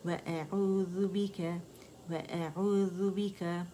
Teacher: حمزہ تو اقصى الحلق سے ادا ہونا ہے، واو باریک ہے